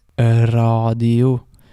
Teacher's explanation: there's this very slight E sound in front of the R. So it doesn't just start an R, like in English it would be radio. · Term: R sound